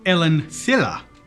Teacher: He says Ellen Thilla, so a th instead of a s sound. So it sounds like a lisp.